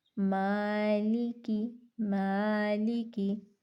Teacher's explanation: میم کو ہم نے لمبا کیا کیونکہ الف مدہ ہو رہا تھا